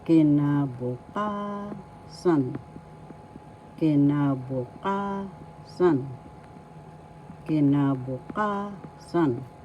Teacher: The fourth syllable ka has the accent